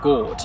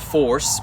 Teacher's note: Gort and force both have the same vowel in them, it's just that force has a r at the end. So really in that stage of English's development they're the same vowel.